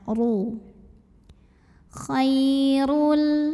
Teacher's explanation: Maka cara membunyikannya ditebalkan, pangkal lidah kita angkat, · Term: tafkhim